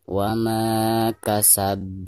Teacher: cara membacanya itu harus dipantulkan dengan suara pantulan yang lebih besar atau yang lebih keras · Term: qalqalah kubro